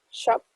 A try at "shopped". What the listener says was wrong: Shopped. La T.